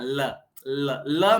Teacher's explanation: आपकी जो जीभ है वो तो जाके टकरा जाती है दांत के ऊपर मसूड़ों के यहां पे। है ना? ल ल में हमारी जीभ तो ऐसे पलट के ऊपर टकरा जाती है और जो हवा निकलती है मुंह से जो उच्चारण निकलता है जो ध्वनि हमारी बाहर आती है वो जीभ के पार्श्व से आती है। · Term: पार्श्विक वर्ण